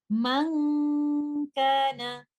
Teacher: Since kaf is a light letter, the ghunnah will be light